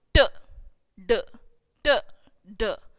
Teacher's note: And here, if you keep your hand here, whenever you are speaking, you could, for example, t, d, t, d. When you say t, you find less vibration. When you say d, you find more vibration.